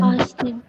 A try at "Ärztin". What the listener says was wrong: Not Arztin, Ärztin. It's a umlaut.